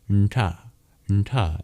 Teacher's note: these are retroflex, meaning you curl your tongue back to pronounce them · And it's your bottom of the tongue that taps against the hard palate to make the sounds